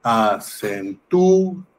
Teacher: Bueno, la sílaba tónica está en tú.